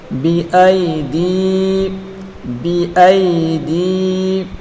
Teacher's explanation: دال یا زر دی یا مدہ ہے، اس کو ایک الف کی مقدار کھینچ کر پڑھیں گے